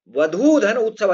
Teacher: अन्य उदाहरण आप देखेंगे, सिंधुर्मी, सिंधुधन उर्मी, लघुधन उर्मी लघुर्मी, और वधूधन उत्सव, इसमें वधूत्सव में क्या है, दीर्घ ऊ है और आगे ह्रस्व ऊ है, तो वधूत्सव हो जाएगा।